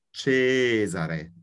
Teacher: The first syllable is long. The first vowel is long, and only one S.